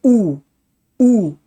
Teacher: उ बोल के महसूस करिए। जबान पीछे को जा रही है। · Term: पश्च स्वर